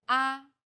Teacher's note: the first tone is steady with a high pitch · the fourth tone Falls sharply and quickly from a high pitch